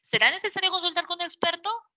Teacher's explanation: tienes un tono final ascendente eso es ascendente · La inflexión final de voz, en este caso, como me doy cuenta, es una pregunta. Mira, sube, baja, mi inflexión de voz sube, de voz baja, sube.